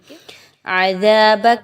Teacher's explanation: दाल को बहुत नरमी के साथ जा की तरह मुशाबहत नहीं देनी